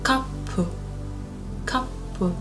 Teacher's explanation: So P becomes double because we have a tsu in between.